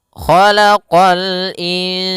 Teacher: istila huruf Kho pangkal lidah kita terangkat · Kha isti'la, huruf kha pangkal lidah kita terangkat. Khalaqa sama qa juga huruf isti'la pangkal lidah terangkat.